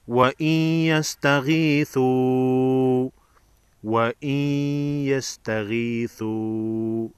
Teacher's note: نون ساکن کے بعد حروف یرملون میں سے یا ہے، ادغام مع غنہ ہوگا، یعنی غنہ کے ساتھ ادغام ہوگا